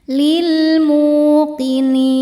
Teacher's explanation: Lil mu hukumnya mad thobi'i zohiri. Sebab ada wau sukun sebelumnya dommah. Dibacanya panjang dua harakat.